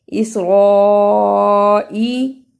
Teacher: یا بنی لمبا کرنا ہے تھوڑا سا کیونکہ اوپر چھوٹی مت پڑی ہے. اسرائی بڑی مت تھی اس لیے اسے 4 انگلی کے برابر لمبا کیا